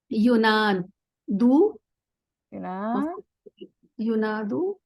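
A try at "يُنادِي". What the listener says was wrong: It's not gonna end with an u.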